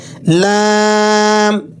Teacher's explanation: زبان کی نوک اوپر کے دانتوں کی جڑ سے لگا کر پڑھیں گے